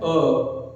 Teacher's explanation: अ में हमारा जिह्वा ना तो ऊपर उठता है ना ही नीचे उठता है, ना तो पीछे की तरफ जाता है ना ही आगे की तरफ, बल्कि मध्य में ही लगता है, स्थिर है। इसलिए हमारा मध्य स्वर कौन सा होता है?